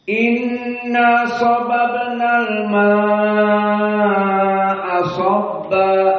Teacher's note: al-ma'a dalam bentuk mad wajib muttasil, maka bagi Wars berapa? Al-isba' 6 harakat.